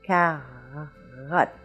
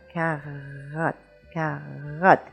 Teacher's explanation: the back of your tongue is going to hit and make a little friction and make the French R. Carotte, like that.